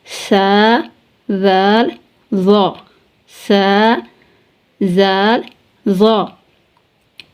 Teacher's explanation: ان تینوں کا مخرج ہے نوک زبان اور ثنایا علیہ کے اندر والے کنارے